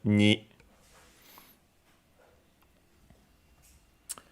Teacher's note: Again, since we have a following e, the consonant is modified, is palatalized, and so it isn't actually n, but more like ni.